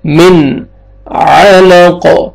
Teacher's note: نون ساکن کے بعد حروف حلقے میں سے عین ہے، یہاں پہ آپ نے اظہار کرنا ہے، جلدی پڑھیں گے۔ من علق، عین کو اپنے صحیح مخرج سے ادا کرنا ہے، اور قاف جب سٹاپ کریں گے وقف کریں گے قاف قلقلہ ہو جائے گا ساکن تو ڈبل ساؤنڈ آئے گا، لق، لام زبر قاف جزم لق، علق، خلق الانسان من علق۔